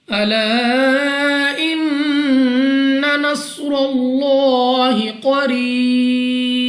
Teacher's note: قاف مستعلیہ میں سے ہے، موٹا پڑھیں گے۔ را کے نیچے زیر تو را کو باریک پڑھنا ہے۔ یا ساکن سے پہلے زیر یا مدہ ہے، مگر وقف میں با کو کر دیں کہ ساکن اور اس یا مدہ کو مد عارض کے ساتھ بدل کر 3، 4 یا 5 سیکنڈ تک کھینچنا ہوگا، اور وقف میں جب ہم با کو ساکن کریں گے تو با پر قلقلہ ہوگا۔